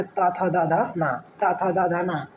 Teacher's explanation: जिह्वा की नोक मतलब जिह्वा नीक ऊपरी दंत पंक्ति का स्पर्श करती है। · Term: दंत व्यंजन